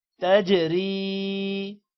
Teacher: را کے نیچے زیر ہے تو را کو موٹا نہیں کریں گے، تجری نہیں کریں گے، تجری باریک پڑھیں گے را کو، تجری.